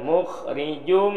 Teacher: ini hukumnya idgham gunah dimasukkan sertai dengung.